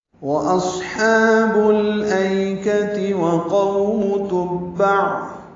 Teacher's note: واو ہونٹوں کی نا تمام گلائی سے ادا ہوگی